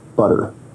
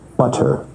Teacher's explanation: Now notice where we write it with two T's in English that your tongue is producing a tap sound there rather than a full stop or plosive sound